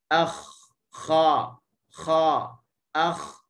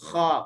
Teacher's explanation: Kha, masa kita sebut tu pangkal lidah kita terangkat. Begitu juga kalau kita membariskannya, kha, pangkal lidah kita terangkat. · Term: isti'la